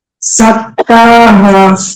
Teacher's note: যা সিটি আওয়াজ করে বলতে হবে।